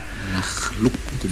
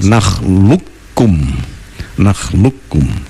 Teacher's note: qafnya menjadi kaf itu ya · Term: Idgham mutaqaribain